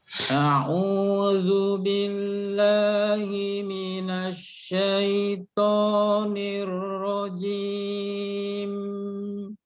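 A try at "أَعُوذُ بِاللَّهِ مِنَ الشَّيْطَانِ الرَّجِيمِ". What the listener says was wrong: Nah, yang penting agak dikurangi lagi dikit Pak ya. Nya agak dikurangi lagi. Jadi jangan kepanjangan suaranya.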